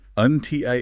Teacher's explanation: Stress the second syllable.